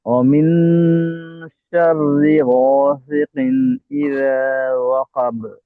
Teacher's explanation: যখন আমাদের হরুফে ইকফা আসবে, এখানে নুন সাকিনটাকে আমরা লুকিয়ে রাখবো। ইকফা কথার অর্থ হচ্ছে লুকানো।